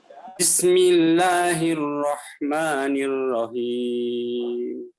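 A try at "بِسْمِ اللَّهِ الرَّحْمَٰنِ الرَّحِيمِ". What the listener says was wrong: Nah, itu yang kurangnya ha ya. Ha, bukan him tapi haim ya. Nah, Bismillahirrahmanirrahim. Nah, itu berarti Bapak latihan huruf ha ya. Nirrahim. Nirrahim. Nah, bukan him tapi haim. Nah, lebih dalam ya. Nah, coba dibaca ha hi hu.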